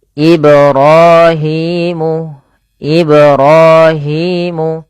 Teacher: Kemudian ibrahimul qawaidah pada lafal ibra pantulkan huruf ba pada lafal kata Ibrahim · pantulkan huruf ba pada lafal kata Ibrahim, karena pada lafal ba tersebut ada bacaan qalqalah, yaitu memantul